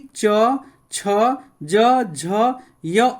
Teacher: ऊपर तालू से उच्चारण होता है